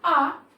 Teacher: इसको बोलने के लिए हमारा जो मुंह है वो बहुत अधिक खुलता है। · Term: विवर्त स्वर